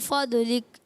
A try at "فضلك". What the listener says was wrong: فضلک، اچھا ضاد میں کلکلا کریں گے؟ نہیں نا، فضلک، ضاد موٹا، فضلک،